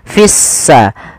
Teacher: lamnya dianggap tidak ada sehingga langsung diidgamkan ke huruf sin sehingga sin-nya berharakat tasdid. Seakan-akan s-nya dua. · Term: Alif lam syamsiyah, alif lam syamsiyah